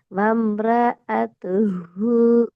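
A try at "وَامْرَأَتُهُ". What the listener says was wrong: ர என்று போறத கட் பண்ணுங்க. ர. ரன்றது. இப்ப இது ரா என்று திருத்திக்கோங்க. இப்பவே திருத்திக்கோங்க. வம் ரா எதுஹு. வம்ரஅத்துஹு.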